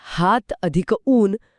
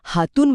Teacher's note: हात अधिक ऊन मध्ये पहिला अ गायब होऊन हातून बनतं म्हणजे इथे दुसरा स्वर जिंकतोय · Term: पररूप संधी